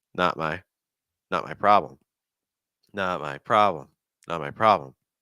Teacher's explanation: do you hear how the t is a held T · the not my part is also very very fast and then the problem part is longer